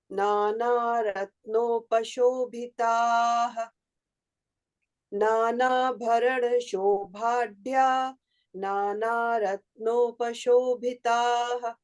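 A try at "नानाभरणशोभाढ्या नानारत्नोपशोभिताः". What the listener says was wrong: Try to remove the pause and do it as a full line, please.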